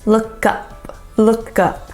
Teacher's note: the K is going to blend into the up